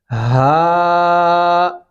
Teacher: मोटा हा सीने से भारी आवाज आप निकालेंगे · ہا موٹا ہا، سینے سے بھاری آواز آپ نکالیں گے